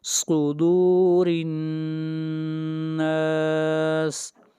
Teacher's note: اگلی آیت، آیت نمبر 5، الذی، الذی، ذال، الذی، الذی یوسوس، یوسوس فی، فی صدور الناس، صدور الناس، صاد بھی حروف مستعلیہ میں سے ہے اس لیے صاد کو موٹا پڑھیں گے